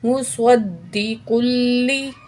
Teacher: काफ की 2 पेश को लाम तशदीद से मिलाएंगे, काफ को मोटा पढ़ेंगे।